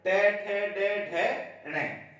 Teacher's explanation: मूर्धन्य जिसमें जिह्वा जो पूरी मुड़ जाती है ये बोलने में